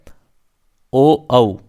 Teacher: कंठोष्टम, कंठ और होठ दोनों, कंठ और ओष्ठ, इनका उच्चारण होता है ओ औ। देखिए ओ और औ इन दोनों का उच्चारण कंठ और ओष्ठ से होता है